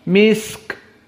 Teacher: Jaroyan as-saut inda sukun hina nutiqa. Maka maksudnya di saat sin disukunkan, dia masih ada suara yang berjalan. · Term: Ar-rokhawah